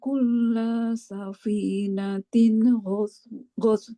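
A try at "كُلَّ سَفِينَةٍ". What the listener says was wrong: Ba kulla safinatin lamnya jangan panjang.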